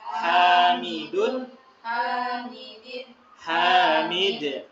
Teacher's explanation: Hamidun, hamidin, kalau kita baca berhenti waqaf maka hamid gitu.